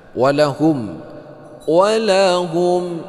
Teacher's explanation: Walahum mimati bertemu dengan ain, ini idhar syafawi ya, tidak berdengung seperti biasa tadi dibaca nyata.